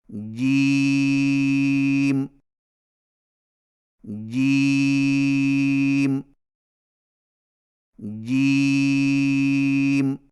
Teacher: جیم کی ادائیگی میں زبان کے درمیان کو تالو کے ساتھ سختی سے لگا کر باریک آواز میں پڑھیں